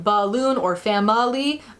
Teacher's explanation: The schwa is written in IPA as the symbol of an upside down e and is the uh sound, like you would hear in balloon or family